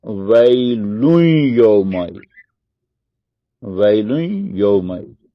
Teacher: نون کی آواز بھی آ رہی ہے اور یا میں اس کا ادغام بھی ہو رہا ہے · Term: ادغام با غنہ